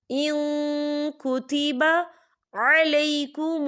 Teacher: یا دیکھیں ان، یہاں نون ساکن ہے اور نون ساکن کے بعد کاف آ رہا ہے، اور کاف جو ہے اکفا کا ورڈ ہے، تو ہم یہاں اکفا کریں گے، نون ساکن کی آواز کو ناک میں چھپائیں گے.